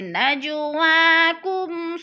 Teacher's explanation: نج پہ قلقلہ ہو رہا ہے، جیم ساکن ہے اور حروف قلقلہ میں سے ہے تو ہم نے اس کو ہلا کر پڑھنا ہے۔ · جیسے نجواکم صدقات، کم پہ پھر اظہار شفوی ہے، میم ساکن کے بعد صاد آ گیا ہے تو ادھر اظہار شفوی ہو رہا ہے یعنی اخفا نہیں کریں گے۔